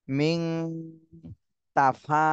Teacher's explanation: নুন সাকিনের পরে এখানে তা ইকফার হরফ আসছে এজন্য এই নুন সাকিনে ইকফা গুন্না করতে হবে